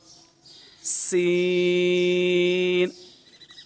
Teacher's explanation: سین، اس پر سیٹی کی آواز آئے گی